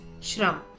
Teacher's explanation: The shra is derived by adding the letters sh plus r. The soft sh blends with the rolling r to form the sound shra. The sound of shra is pronounced as shra like the shra in the word shram.